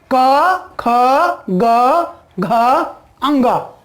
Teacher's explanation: इनका जो उच्चारण होता है कंठ का स्पर्श से होता है, इसीलिए इनको कंठ भी कहते हैं।